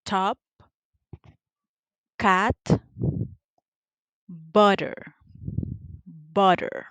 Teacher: So now let's move on to the next phoneme, which is that one is voiceless. The point of articulation, it is alveolar. The manner of articulation, it is a stop or plosive.